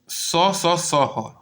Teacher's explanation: इनको बोलते समय हमारी हवा जो है घर्षण करती है और हवा थोड़ा गर्म निकलती है इसलिए जो स स स ह उष्म व्यंजन कहा जाता है